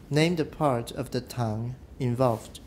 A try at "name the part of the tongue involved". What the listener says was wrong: Name the part of the tongue involved. Okay, part doesn't need to be that much longer. So name the part of the tongue involved.